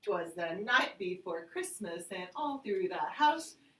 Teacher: all right the third one is called anapest or anapestic and it is two unstressed followed by a stress it's and it's a lot it's kind of a fast beat